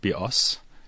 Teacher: the word bios, with the stress on the second syllable, means bow